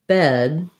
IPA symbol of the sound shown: ɛ